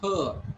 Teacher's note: you are not going to pronounce this letter r or row sound is not pronounced at all